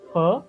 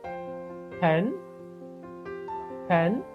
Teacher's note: purr is a bilabial plosive sound. Okay, two lips close with each other or two lips contact with each other and then sounds will be produced. That sound is purr sound.